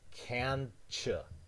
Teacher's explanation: so that it goes into the post alveolar region and then you wouldn't have a t you would have the affricate cha · have an alveolar t and you have a palatal sound here the palatal sound could pull your tongue up so that it goes into the post alveolar region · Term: assimilation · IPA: k ɑː n t͡ʃ j uː